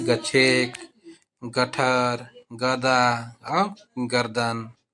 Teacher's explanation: ग का उच्चारण ये अल्प प्राण है और सघोष है